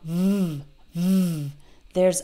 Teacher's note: So V is a voiced sound, v, v. I'm using my vocal cords to make this sound.